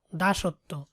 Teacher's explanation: বটা বাদ গিয়ে ওই অক্ষরটাই দ্বিতীয় উচ্চারণ হয়, মানে দুইবার উচ্চারণ হয়